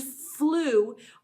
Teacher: But the vowel sound changes. Instead of I at the end, this time I hear ooh. That is one of the long vowel U sounds.